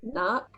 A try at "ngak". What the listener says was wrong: Yes, knock, knock. But just leave out the end sound and say it.